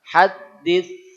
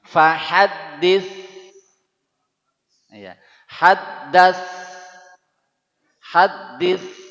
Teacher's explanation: ujung lidahnya naik ke atas baca es tapi lidahnya naik ke atas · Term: tsa